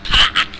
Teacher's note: R's do not exist in South Boston.